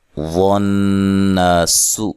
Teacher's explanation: ونسو یہاں غوات کو موٹا ادا کریں اور نون مشدد پہ غنہ ضروری ہے. الف مدہ ہے, سین کو باریک پڑھنا ہے اور لمبا نہیں کرنا.